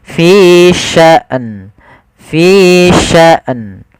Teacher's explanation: Harusnya dia matikan hamzah baru matikan nun